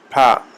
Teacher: اگر پے کو ہم پڑھیں گے تو اس میں تھوڑی سی پھے کی آواز ہوگی